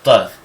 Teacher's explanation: It's actually a T or a D sound moved back on the top of the mouth.